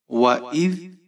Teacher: حمزہ کے نیچے زیر ہے، ذال ساکن ہے۔ ذال کو نرمی کے ساتھ پڑھیں گے، حمزہ کو ذال کے ساتھ ملائیں گے۔